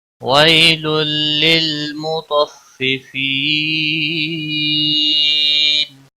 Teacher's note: یالین ہے، تھوڑا نرمی کے ساتھ کھینچ کر ادا کریں گے · تنوین کے بعد حروف یرملون کا لام آیا ہے، ادغام ہوگا بلا گنہ۔ لل لام کو ہلانا نہیں۔